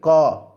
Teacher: क ऐसा कंठ पर जा रहा है आवाज, जोर थोड़ा कंठ पर आ रहा है